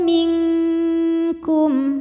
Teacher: cara baca Nun sukunnya adalah samar-samar siap-siap menuju makhraj huruf Kaf pangkal lidah disertai dengung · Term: ikhfa ab'ad